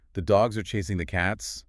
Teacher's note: >> So if I have a sentence like the dogs are chasing the cats, the words dogs, chasing, and cats are heavily elongated · the grammatical glue words the and are are pulverized into tiny fractions of a second